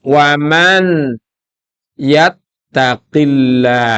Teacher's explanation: yaitu ya Nun mim Waw mesti nanti akhirnya menjadi bacaan kisumi bacaan dalam rongga hidung nunnya hilang masuk kepada ya wtaqah nunnya mana di hidung W enggak boleh waman yattaqillaha Enggak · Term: idgham bighunah